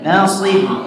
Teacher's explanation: Shotnya tebal ya, karena shot itu huruf isti'la ya. Jadi shot itu apapun harokatnya dia tetap tebal ya.